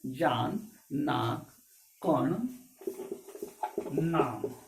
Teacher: इन शब्दों को उच्चारण करते समय वायु कुछ न कुछ नासिका, नाक से भी प्रवाहित होता है। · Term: अनुनासिक